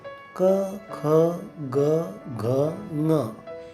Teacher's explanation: जसे क, ख, ग, घ, ङ यांना कंठव्य म्हणतात. त्यांचा उच्चार करताना तो कंठातून म्हणजेच घशातून केला जातो